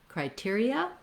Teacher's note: When we make it plural, criteria, then we just basically drop the N sound, but you'll see criteria has the same stress pattern and the same first three syllables.